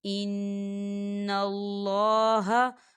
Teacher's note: یہاں دیکھیں نون مشدد ہے تو یہاں پہ غنہ ہوگا۔